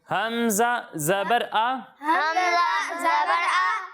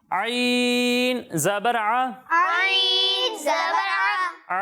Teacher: جب ہم حمزہ کی ادائیگی کریں گے تو اسے حلق کے نیچے والے حصے سے پڑھیں گے. ٹھیک ہے, اور جب ہم عین کی ادائیگی کریں گے تو اسے حلق کے بیچ والے حصے سے پڑھیں گے. بیچ والے حصے سے پڑھیں گے, درمیان والے حصے سے پڑھیں گے.